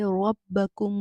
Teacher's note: را کے اوپر زبر آ رہی ہے تو را کو موٹا پڑھیں گے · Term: را موٹی